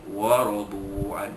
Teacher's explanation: ra dibaca pada atas dibaca tebal, tafkhim